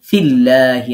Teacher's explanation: আল্লাহ শব্দে লাম বারিক হবে এক আলিফ মাদ হবে